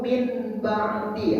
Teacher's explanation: Kalau iklab diganti bunyi nun jadi bunyi mim.